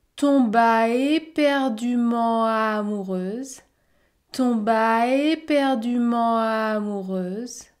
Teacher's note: il y a un enchaînement entre tomba éperdument